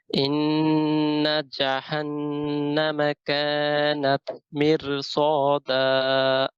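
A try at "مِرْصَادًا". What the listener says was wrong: মেয়র র heavy হবে কেন?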